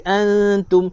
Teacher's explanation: Wala antum ikhfa hakiki antum. Antum ikhfa hakiki, nun mati berjumpa dengan ta, dengung ngg